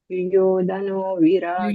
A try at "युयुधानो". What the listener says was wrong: ಯುಯುಧಾನೋ ಯುಯುಧಾನೋ ಅಲ್ಲಿ ದಾ ದೀರ್ಘ ಇದೆ ಯುಯುಧಾನೋ ಯುಯುಧಾನೋ ಅದು ಮಾತ್ರ ಹೇಳಿ ಯುಯುಧಾನೋ